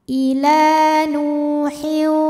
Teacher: dipanjangkan lamnya dua harakat Ila nu nu Thobi'i dahohiri ya karena ada wau sukun didahului baris damah maka huruf nun dipanjangkan dua harakat